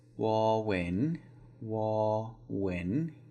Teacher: The rising tone is the second word